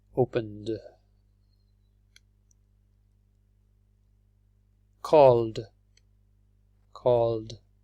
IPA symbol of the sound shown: d